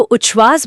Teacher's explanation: त बोलते समय जीभ दांतों पर होती है और श बोलते समय तालु पर। जब त और श को एक साथ तेजी से बोलने की कोशिश की जाती है तो वो घर्षण और हवा का दबाव इतना ज्यादा होता है कि वो छ की ध्वनि में बदल जाता है। अच्छा तो उच्छवास बोलते समय जो छ निकलता है वो असल में त और श के तेजी से टकराने का ही मिश्रित रूप है।